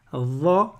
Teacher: C'est les trois lettres où la langue, elle est en contact avec l'extrémité des incisives supérieures.